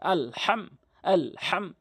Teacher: এই মিম সাকিনকে কখনোই আপনি গুন্না করতে পারবেন না আপনাকে হাম বলতে হবে হাম এরকম গুন্না করতে পারবেন না হাম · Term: ইজহারের শাফুবির নিয়ম